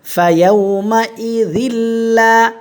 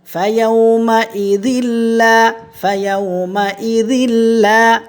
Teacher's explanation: ঠিক আছে, তাহলে এই তানভিনে কোনো গুন্না হবে না, বেলা গুন্না হবে। ঠিক আছে, গুন্না ছাড়া স্পষ্ট করে দ্বিতীয় লামে তাসদিদ দিয়ে গুন্না ছাড়া স্পষ্ট করে পড়ব, এটাকে ঈদগমে বেলা গুন্না বলে।